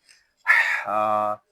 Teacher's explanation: ہا یہ حلق کے درمیان والے حصے سے ادا ہوگا